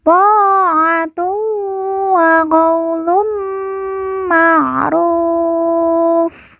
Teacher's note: Ta'atun wa. Tun bertemu dengan huruf wawu, maka tanwin dileburkan, langsung masuk huruf wawu, kemudian ditekan, ditahan 2 harokat dan didengungkan. · lun bertemu dengan huruf mim yang bertasydid, maka tanwin dileburkan, langsung masuk huruf mim, kemudian ditekan, ditahan 2 harokat dan didengungkan.